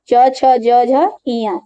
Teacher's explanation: ये तालु से बोले जाते हैं, ये तालु को छूते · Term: च वर्ग